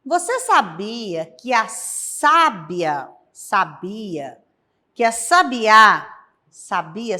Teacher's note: a sílaba tônica da palavra sabiá é a última onde temos o acento agudo